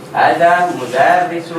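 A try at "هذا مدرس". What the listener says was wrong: Hada. Ingat hanya panjang.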